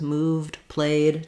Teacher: you notice here I don't say move Ed or play Ed I don't have to add a syllable it's just one syllable words moved played just the D sound